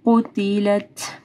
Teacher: قُتِلَت تا کے اوپر ہمز ہوگا